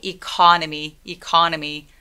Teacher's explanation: 그래서 얘는 음절이 economy 이렇게 네 개의 음절을 가지고 있어요. 근데 강세는 어디 오냐면 두 번째 음절에 옵니다. 그럼 첫 번째 E라는 소리를 낼 때에는 소리를 좀 작게 해주시는 게 필요해요.